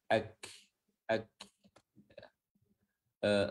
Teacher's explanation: Kaf di sini adalah dia memiliki sifat hams. Walaupun dia sukun, hamsnya harus tetap disebutkan.